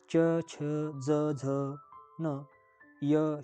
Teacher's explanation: तालव्य म्हणजे ज्याचा उच्चार हा जिभेचा मध्यभाग टाळूला लागतो थोडासा.